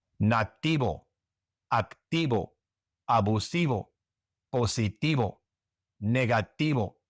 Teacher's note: in the great majority of Latin America and in Spain, the V is pronounced like a B